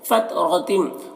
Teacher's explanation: فت اور غتم را کو پر پڑھیں گے اور تم میں ادغام ناقص ہو رہا ہے، تنوین کو میم سے ملا کر غنہ کے ساتھ میں پڑھیں گے۔